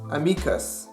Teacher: stress on the Latin word is on the second syllable, mi